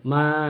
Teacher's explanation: Jadi ma ini ada di bibir huruf makharijul hurufnya. Antara dua bibir.